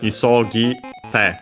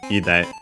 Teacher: the te becomes voiced, becomes de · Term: voicing